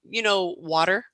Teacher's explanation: But you'll notice that American English will pronounce the T's quite differently than British English. The T's are very firm and crisp in British English.